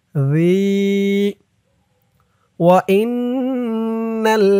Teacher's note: জালের উচ্চারণটা একদম নরম হবে জিহ্বার মাথা উপরের দাঁতের মাথার সাথে লাগবে